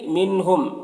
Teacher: منہم کے نون میں اظہار حقیقی ہو رہا ہے اور میم میں اظہار شفوی ہو رہا ہے